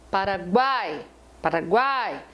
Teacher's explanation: Então, um U e um I, sem ser tônicos, né? O U e o I, juntos de um A, que é forte e que é a tônica, eles não têm chance de serem vogais. Eles vão ser semivogais.